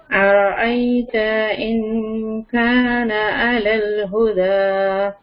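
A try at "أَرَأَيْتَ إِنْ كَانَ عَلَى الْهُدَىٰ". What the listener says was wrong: आप ना ता को लंबा कर रही हैं, ता के ऊपर सिर्फ जबर है।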